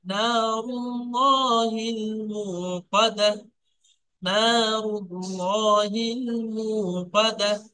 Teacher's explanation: এই তাটা হায় সাকিন হয়ে যাবে